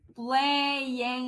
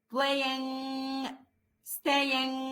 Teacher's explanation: اخر حته في لساني من جوه هتشبط في سقف بقي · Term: لونج ان